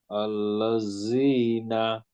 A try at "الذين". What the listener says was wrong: এটা কি আপনি জিভ লাগছে আদৌ দাঁতে? হ্যাঁ, আপনার ওপরে লাগাইতে হবে, দাঁতের একদম মাথায় গিয়ে লাগাইতে হবে, সামনে দাঁত যেখান দিয়ে বের হয়ে যাচ্ছে ওখানে এনে বলতে হবে। আপনার জিভ লাগে নাই দাঁতে।